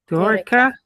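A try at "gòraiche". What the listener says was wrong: Get the I sound in there somehow. Gorica. Now, Gora, Gorica.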